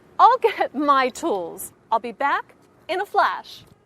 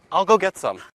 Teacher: When Americans reduce the words I and will to make I'll, the short form sometimes sounds like all.